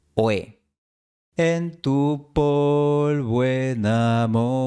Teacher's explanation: la última O de polvo se une a la E de enamorado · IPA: [o̯e]